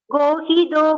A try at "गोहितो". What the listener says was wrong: I could hear little bit of dakara here. Gohito gopatir gopta.